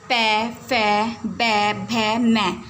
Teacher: आप इन्हें बोलते समय महसूस करेंगे, जो लिप्स हैं, होठ हैं, वो एक दूसरे से टच होते हैं, दोनों ऊपर और नीचे का दोनों ओष्ठ टच होते हैं